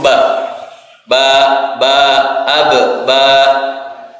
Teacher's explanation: dua Sisinya bibir bawah dan bibir atas